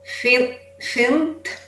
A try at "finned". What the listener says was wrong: Finned. I want to hear the end of, I want to hear the D on the end. Finned. Finned. Finned. No, you only have to watch the last letter. Finned. And don't think you're exaggerating.